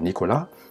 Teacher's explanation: le son M, comme dans maman, et N, comme dans Nicolas, c'est l'un des seuls sons qu'on fait avec le nez